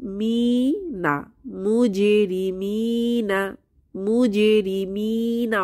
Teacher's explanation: মিতে ইয়ামাদ এসেছে এক আলিফ টেনে পড়বো